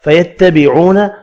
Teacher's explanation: واو مدہ ایک الف کی مقدار میں کھینچ کر پڑھیں گے